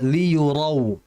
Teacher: Rau harus ditebalkan huruf rnya.